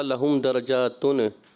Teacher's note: تھوڑا سا تنوین میں کلکلا محسوس ہوا